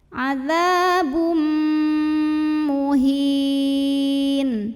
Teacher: Berikutnya ada idgham bi gunnah. Karena ada tanwin dhammah bertemu dengan huruf mim, maka tanwin dhammahnya masuk ke mim, adzabum, dan dengungkan, tahan bunyi m-nya.